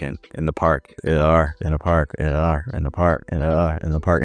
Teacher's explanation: so your vowels are then schwa, and then you have an R sound